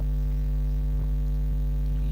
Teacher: या का उच्चारण स्थान तालु होता है